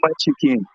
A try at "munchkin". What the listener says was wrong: nigga, it's two syllables, nigga. It's munchkin, not munchkin. This nigga, you don't add a syllable.